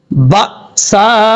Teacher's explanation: با کے بعد حمزہ ہے، اس حمزہ کو جھٹکے کے ساتھ پڑھا جائے گا کیونکہ یہ حمزہ ساکن ہے